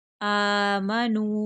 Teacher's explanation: हमजा को खींच कर पढ़ेंगे, ऊपर खड़ी ज़बर है